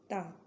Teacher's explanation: ता जब आप बोल रहे हैं तो दंत से आवाज आ रही है ना।